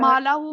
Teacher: माँ पे अलिफ मद आ रहा है, माँ को लंबा करेंगे और हा को जो है, हा को उसके ऊपर उल्टा पेश भी है और मद भी आ रही है, इसको स्ट्रेच करेंगे।